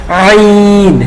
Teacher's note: আইন গলা মোটা করতে হবে, কণ্ঠনালীর মধ্যখান উপরের তালুর সাথে চাপ দিয়ে আইন, হ্যাঁ, এবং 4 আলিফ টান দিতে হবে, আইন।